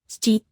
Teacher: suena como un soplo suave con la lengua cerca del techo de la boca